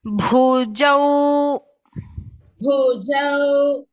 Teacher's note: Bhakara is Mahaprana. Jakara is Alpaprana.